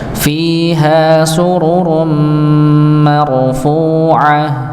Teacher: Ketika ra sukun sebelumnya fathah, maka dibaca tebal